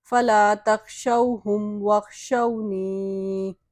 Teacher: إِلَّا الَّذِينَ ظَلَمُوا مِنْهُمْ، اسی طرح یہاں پہ یہ واو مدہ ہے اور یہ یا مدہ ہے، دونوں کو ہی ایک ایک الف کی مقدار کھینچ کے یعنی لمبا کر کے پڑھیں گے۔